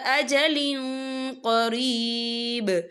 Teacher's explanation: یہاں دیکھیں اجلن، لام کے نیچے تنوین ہے، تنوین کے بعد جو ہے قوف آ رہا ہے، اور قوف جو ہے اکفا کا ورڈ ہے، تو ہم یہاں اکفا کریں گے، تنوین کی آواز کو ناک میں چھپائیں گے